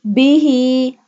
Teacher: ہا حلق کے نچلے حصے سے ادا کیا جائے گا۔